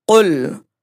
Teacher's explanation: قل قاف حروف مستعلیہ میں سے ہے، موٹا پڑھیں گے